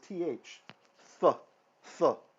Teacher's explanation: the Tav in ancient times when it didn't have a dot in it it was th